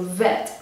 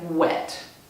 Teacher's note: one thing that you might notice is that V and W can often sound the same. So vet might sound like wet.